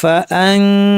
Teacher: ফুল pressure না দিয়ে আমরা নাক থেকে গুন্না করব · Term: ইখফা